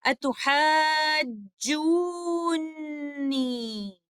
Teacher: دونوں نون کو اظہار کے ساتھ نہیں پڑھا جاتا بلکہ پہلے والا نون دوسرے والے نون کے اندر مدغم ہو جاتا ہے، اور ہم موسٹ کمپلیٹ غنہ اور مد اللازم کا رول فالو کرتے ہیں.